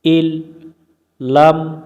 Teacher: নুন সাকিনের বাম পাশে লাম অক্ষর পাইলে ঈদগম করে পড়তে হয়